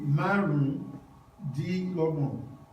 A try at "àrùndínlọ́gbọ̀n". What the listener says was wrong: Márùndínlọ́gbọ̀n. You broke it down, right? The way you said it, you broke it down word for word. But how are you going to say it together? Àrùndínlọ́gbọ̀n. Àrùndínlọ́gbọ̀n.